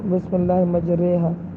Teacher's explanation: امالہ کا مطلب یہ ہے کہ الف کو جو ہے یا کو الف کی طرف مائل کرنا ہوتا ہے اور اس کو قطری کی طرح پڑھنا ہوتا ہے، بسم اللہ مجرہا۔